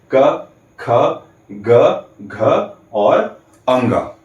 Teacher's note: ठीक है, तो ये जो क, ख, ग, घ, अंगा, ये जो 5 वर्ण है, जब भी हम इनका उच्चारण करते हैं तो हमारे अंदर से आती हुई वायु बाहर निकलते समय हमारे कंठ को स्पर्श करते हुए, कंठ को टच करते हुए बाहर निकलती है। इसलिए इन सभी 5 वर्णों क, ख, ग, घ, अंग का उच्चारण स्थान हो गया कंठ।